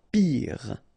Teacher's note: Final E not pronounced, so R at the end.